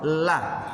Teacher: Saat diucapkan dia bukan keluar dari ujung lidah tapi dia dari Sisinya kanan kiri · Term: huruf lam